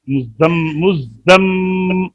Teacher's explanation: میم کے اوپر غنہ پورا کیجیے